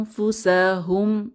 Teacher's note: হরফ ফা আসার কারণে আমাদেরকে গোপন করে পড়তে হবে গুন্নাহ সহ। · এখানে আমরা গোপন করার সময়, গুন্না করার সময় 2 হারাকাত পরিমাণ সময় ধরে রাখব।